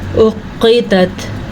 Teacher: موٹا قاف اور ساتھ باریک تا